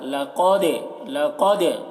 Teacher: قاف کو پر پڑھ رہے ہیں اور دال میں قلقلہ ، لقد، لقد، دال کی آواز ڈبل ہو رہی، نکل رہی